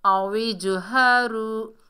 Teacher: جیم میں double sound آئے گی، یہ حروف قلقلہ میں سے ہے